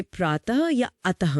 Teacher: और तीसरा है विसर्ग यानी आह, जैसे प्रातः या अतः में। हाँ, इसका उच्चारण गले से होता है और इसमें एक हल्की सी ह की ध्वनि आती